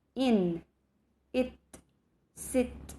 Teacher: a half inch apart the tongue is high and relaxed